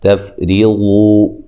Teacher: تا کو باریک، فا کو ہلانا نہیں ہے، را کو باریک پڑھنا ہے